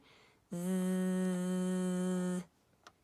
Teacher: It's almost like you're holding an invisible ball of air on your tongue when you make the sounds S and Z. But the difference is your voice is on for the stretchy Z consonant sound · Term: voice on